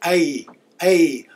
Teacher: make exception to the English alphabet we pronounce it AE a almost an i but it kind of leans over towards an a